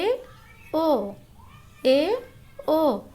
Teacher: इसमें मुख द्वार आधा बंद रहता है। तो जिन स्वरों के उच्चारण में मुख द्वार आधा बंद रहता है उसे अर्ध संवृत कहेंगे। इसके अंतर्गत ए ओ ए ओ तो ये अर्ध संवृत है।